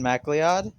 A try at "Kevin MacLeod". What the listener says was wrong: It's MacLeod? McLeod. It's McLeod. Yeah, Mac. McCloud.